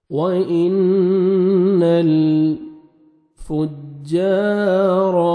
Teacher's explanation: نون مشدد ہے، غنہ کریں گے، لام کو آپ نے ہلا کے نہیں پڑھنا